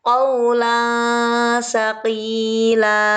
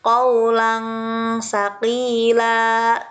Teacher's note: Tanwin, fathah tanwin bertemu dengan huruf sa. Nah, huruf sa termasuk kepada huruf ikhfa. Dibaca harus samar dengan bunyi ang.